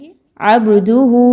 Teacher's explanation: अबहु ब पर कलकला ब को हिलाएंगे · با پر قلقلہ، با کو ہلائیں گے